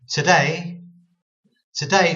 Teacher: we're putting the emphasis on day on the syllable two syllables we're putting the emphasis on the second syllable